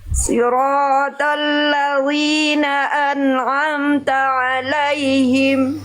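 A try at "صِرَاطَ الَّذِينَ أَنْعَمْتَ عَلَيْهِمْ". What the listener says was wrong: Sli, tebalkan lagi sedikit slotnya. Siratal ladzi, zi jangan li, jangan sampai kayak huruf v kasroh. Zi tipis, lidahnya rileks. Siratal ladzi, zi jangan li. Siratal ladzina an'amta alaihim.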